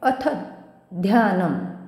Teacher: आता हे असं नाही वाचायचं आहे, अथ ध्यानम असं नाही, थच्या पुढे आहे जोडाक्षर, त्यामुळे अथ ध्यानम, थ वर आघात येईल